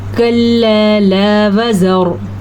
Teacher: कल्ला अलिफ मद्दा, ला फिर से अलिफ मद्दा, दोनों को लंबा करना है। वज़र, रॉ को पूर करके पढ़ना है।